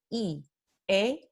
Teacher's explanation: Así que mirando las vocales desde el punto de vista de este segundo parámetro, desplazamiento de la lengua, vamos a ver que las vocales I, E requieren que la lengua se desplace hacia la parte anterior de la boca